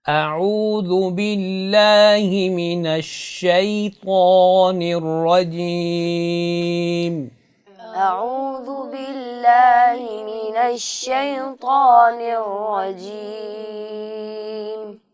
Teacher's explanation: ذال کی ادائیگی میں آپ نے سیٹی نہیں کرنی اور طاء کو موٹا کر کے پڑھنا ہے